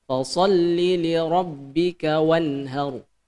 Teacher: Jadi bukan dibaca dengung melainkan dibaca jelas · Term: izhar